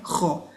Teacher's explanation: This is the next letter, kha. And that's a throat letter, and it comes specifically from the upper part of the throat. So as we said, ha is from the middle throat, kha is from the upper part.